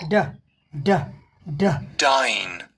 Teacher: Stop the air with your tongue behind your teeth. अपने दांतों के पीछे हवा को जीभ को दांतों के पीछे से ऊपर सटाकर पीछे हवा रोक दो। उसके बाद फिर दूसरे चरण में जीभ को नीचे की तरफ ले आओ और झटके से हवा बाहर निकलेगी।